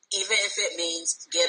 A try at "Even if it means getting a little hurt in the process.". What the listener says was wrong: It's not even if it means. You're ending that. It's even if it means. It's extending.